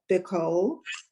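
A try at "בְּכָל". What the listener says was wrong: No, there's no dot in there.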